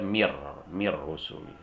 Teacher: nun mati ketemu ra, dibaca mir rusul, dan tidak boleh didengungkan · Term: idgham bila gunnah